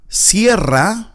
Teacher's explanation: Now the R has that rolling sound.